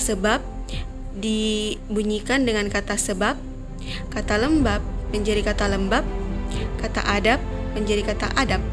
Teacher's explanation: kata serapan yang berakhiran dengan bunyi b dapat dilafalkan menjadi p dalam bahasa Indonesia